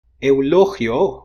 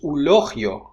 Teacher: eulogio, which means eulogy, becomes ulogio, which is monophthongized. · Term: synchronic monophthongization